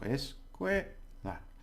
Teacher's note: the stress is on the second to last syllable, which is que